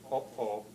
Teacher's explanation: there is a distinctive kind of consonant which linguists call the glottal stop